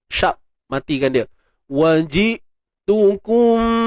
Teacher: hamzah yang mati kita tahan suara betul-betul sebab pada hamzah ni ada sifat syiddah dia, tertahannya suara. Okey. Jadi hindar, apa yang kita kena hindari ialah berlakunya tawallud.